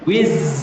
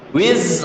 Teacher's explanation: Wiz itu lidah kita, ujung itu tempelkan ke gusi yang bawah yang dalam. Wiz, ada suara z.